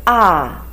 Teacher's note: the voice from high to low